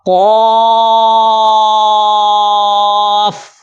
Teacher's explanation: زبان کی جڑ اور تالو کا نرم حصہ، یہ مخرج ہے موٹے قاف کا